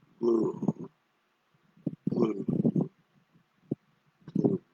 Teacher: It's going to start in the middle of the voice range, glue, and it's going to end in the middle of the voice range, glue. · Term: the dippy tone